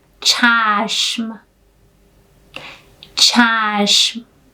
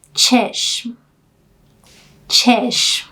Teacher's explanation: Here I must also add that chashm is the official Persian. In colloquial version, you just use the short vowel e